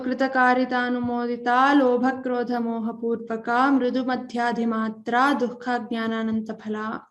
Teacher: That's only because I couldn't continue my breath, holding my breath. So if we say the whole thing together, the visarga doesn't come as there's a sandhi